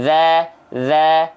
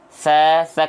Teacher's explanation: kalau dzal enggak keluar nafas cuman mengalir suara dza kalau t tsa kayak huruf Dal tapi bocorin nafas